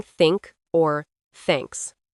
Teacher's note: You should feel the air coming through. It's like a soft, almost hissing sound.